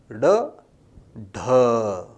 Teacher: वे ध्वनियां जिनके उच्चारण में जीवा गोल होकर झटके से सीधी हो, उन्हें उत्क्षिप्त या ताड़न जात वर्ण कहा जाता है। · जीवा की टो गोल होती है, फिर झटके से सीधी होती है, थूक बाहर उछलता है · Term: उत्सिप्त वर्ण